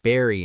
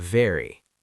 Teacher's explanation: B is made with your lips closed, V is made with your teeth and lips. So for V, your top teeth touch your bottom lip.